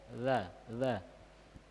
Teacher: Huruf zal di ujung lidah. Ujung lidah dia keluar sedikit. Ya. Di antara dua gigi kita, gigi atas, gigi bawah.